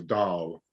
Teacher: the H is not quite silent. It's sort of, it's a bit of an extended A, so Dahl. I don't have him in my garden yet.